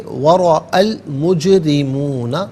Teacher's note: را کے نیچے زیر ہے، را کو باریک کر کے پڑھا جائے گا۔ مجرمون میں نون پر زبر ہے، اسے النار کے نون کے ساتھ ملائیں گے، درمیان میں سے الف یعنی حمزہ کو حذف کیا جائے گا۔ · وَرَأَى، اچھا جب اسے ہم انفرادی طور پر پڑھیں گے تو رعا حمزہ کو کھینچ کر پڑھیں گے تھوڑا سا، لیکن ملا کر پڑھیں گے تو حمزہ پر زبر ہوگا، اور المجرمون کے لام ساکن کے ساتھ ملائیں گے، درمیان میں سے الف یعنی حمزہ کو حذف کیا جائے گا۔ ہم اسے پڑھیں گے وَرَأَى الْمُجْرِمُونَ، را کے نیچے زیر ہے، را کو باریک کر کے پڑھا جائے گا۔